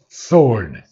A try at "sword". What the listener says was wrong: The W is not pronounced again.